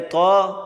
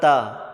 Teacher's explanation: تو کو موٹا کریں گے، تا کو باریک